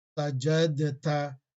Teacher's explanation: the makhraj of dal and ta is the same, from the same place in the mouth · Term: idgham